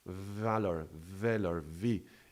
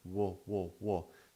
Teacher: It's not so smooth because the v is this fricative that is creating friction. Remember the v as a passage, as the valve is constraining, and there is some pressure to pass through.